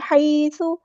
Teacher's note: حیث نہیں پڑھنا، حی، ہا کو مستحرک یعنی مڈل تھروٹ سے ادا کرنا ہے، سا کو نرمی سے ادا کرنا ہے اور سا کی جو پیش ہے اس کو لمبا نہیں کرنا